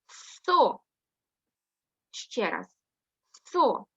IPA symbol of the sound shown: с